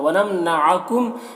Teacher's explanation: वनमनअकुम, यहाँ पर मीम के यहाँ पर इदगाम शफ़ा भी हो रहा है, तो मीम को मीम से मिलाकर गुन्ना के साथ में पढ़ेंगे।